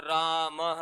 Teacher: विसर्ग में है की ध्वनि आती है